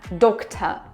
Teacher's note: Also, pay attention the r is not pronounced at the end.